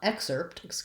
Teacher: what we have there is first syllable stress. So I have a clear vowel on that first syllable, and I'm going to hold it longer.